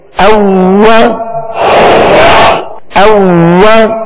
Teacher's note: वाव को दोनों होठों की गोलाई से अदा करेंगे